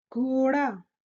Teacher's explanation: Remember to roll your tongue a little bit when sounding the d sound